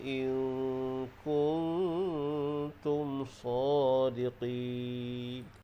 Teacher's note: Hukumnya adalah ikhfa haqiqi. Sebab huruf kaf dan huruf ta adalah huruf ikhfa haqiqi. Jadi dengung dengan kadar dua harkat. · Jadi panjang mad arid li sukun kita baca dengan kadar 6 harkat. Mad arid li sukun boleh dipanjangkan 2, 4 atau 6 harkat.